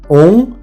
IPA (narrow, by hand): ɔ̃